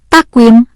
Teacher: membaca yang benar pada lafal takwim adalah memantul atau qalqalah yakni pada huruf qof yang disukun.